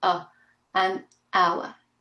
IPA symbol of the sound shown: ə